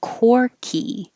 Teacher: the vowel is or so you have to round your lips